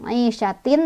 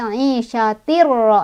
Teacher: Cara bacanya tanwinnya langsung masuk ke ro. Jadi bukan aisyatin tapi aisyatir ro, langsung masuk.